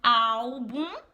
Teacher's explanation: O bum é a última sílaba. Só que o bum não é a mais forte. O mais forte é o au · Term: paroxítona